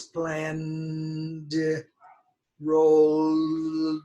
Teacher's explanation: The N here has voice. So the D takes voice.